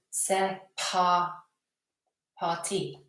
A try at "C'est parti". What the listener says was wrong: No, not air. No, the R there. That R. C'est parti. C'est parti. C'est parti.